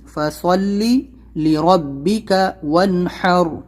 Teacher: ہا نکالنا ہے، را کو موٹا کرنا ہے، اس سے پہلے زبر ہے۔ ون کو جلدی پڑھنا ہے کیونکہ نون ساکن کے بعد ہا حلقی لیٹر ہے، اظہار کرنا ہے، وانحر۔